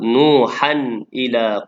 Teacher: Tanwin bertemu dengan hamzah izhar halqi dan bacaan jelas pada tanwin tersebut.